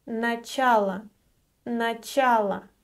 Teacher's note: It ends with O, but since it is unstressed, it is pronounced as Ы.